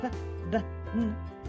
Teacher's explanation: Those are produced with in your lips, closing both of your lips. So p, it's a bilabial consonant and it's also a plosive.